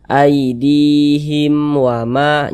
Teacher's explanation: dibaca jelas dia tidak berdengung jadi baca pendek saja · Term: izhar syafawi